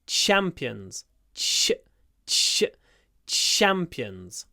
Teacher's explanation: try to do quite a long CH at the beginning